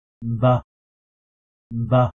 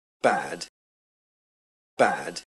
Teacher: English BDG in most positions aren't fully voiced. Here all we have is the little noise of the lips separating.